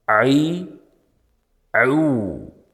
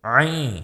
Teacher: Endi ayn harfini og'izni ochmasdan etishlikda nima muammo bor deydigan bo'lsak, ayn harfida kelayotgan havo oqimi burunga o'tib ketib qoladi.